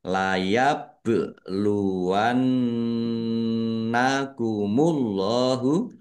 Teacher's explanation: nun tasdid dibaca ghunah atau mendengung nun tasdid dan mim tasdid itu di bacaan ghunah atau mendengung biar mendengung maka Maka ditahan. · Allahnya dibaca tebal karena harakat di depannya dommah. Lam fathah berdiri mad thobi'i panjang dua harakat.